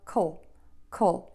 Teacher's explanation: You can actually think of it even without a vowel there, just the K and the L sound.